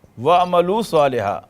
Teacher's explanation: اب واؤ مل گیا عین سے ملنے کے لیے تو یہ حمزہ لکھا رہ گیا، پروناؤنس نہیں ہوگا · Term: حمزۃ الوصل